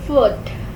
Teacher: It is a short semi-high back rounded vowel.